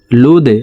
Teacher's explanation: দাল কলকলার হরফ নিচের দিকে ধাবিত করে ধাক্কা দিয়ে উচ্চারণ করব। লাম দাল পেশ লুদে এক আলিফটান।